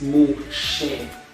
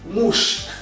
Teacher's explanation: The shva under the shin doesn't mean that the pronunciation is mu she. It's just mush, no vowel there.